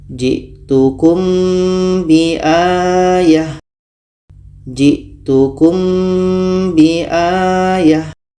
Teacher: dalam surah Ali Imran ini ada mim mati bertemu ba ah ini kita baca samar dan dengung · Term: Ikhfa Syafawi